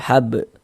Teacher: Huruf ba sukun mantul. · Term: qalqalah sugra